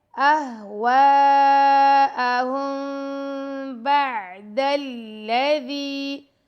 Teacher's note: میم ساکن کے بعد با ہے، یہاں پہ ہو رہا ہے اخفاء شفوی تو یہاں پہ ہم ٹائم دیں گے۔ أَهْوَاءَهُمْ بَعْدَ الَّذِي، دال کو ہم لام سے ملا دیں گے، دال کے ساتھ یائے مدہ آ رہا ہے تو اس کو ہم 2 سیکنڈ تک لمبا کریں گے دال کو۔